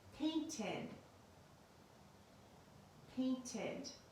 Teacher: there's that ed ending, but I'm noticing when I say that ending, it sounds like id